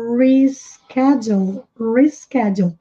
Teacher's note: A diferença é que no inglês é com esse R retroflexo.